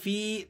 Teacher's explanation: یہ یا مدہ ہے، آپ نے اس کو 1 الف تک کھینچ لینا ہے